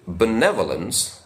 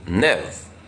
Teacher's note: in the word benevolence the stress is on the second syllable Nev